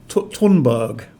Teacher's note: i believe her surname is tunburg with an aspirated t but it's written t h so you'll find a lot of